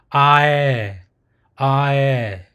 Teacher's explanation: it'll be a mixture of ah and the eh. So you pronounce it ae, ae.